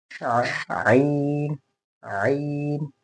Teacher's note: यहाँ इसे बिल्कुल हमने हलक से पढ़ना है, हलक से, यहाँ middle of the vocal cord